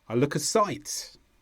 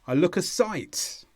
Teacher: so the stress here is on site